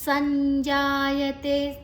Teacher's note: ಸಾದ ನಂತರ ಅನುಸ್ವರದ ಉಚ್ಚಾರಣೆ ಞ, ಮುಂದಿನ ಅಕ್ಷರ ಜ ಇದೆ